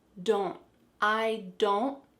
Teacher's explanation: So you're making a slight N sound, but you want to make sure that that T is stopped.